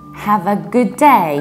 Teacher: you pronounce D only once due to elision